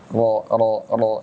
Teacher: bunyi o-ya bukan disebabkan oleh bibir disebabkan oleh terangkatnya lidah bagian belakang ro ro ro jadi bibirnya enggak monyok ro ro bahkan ro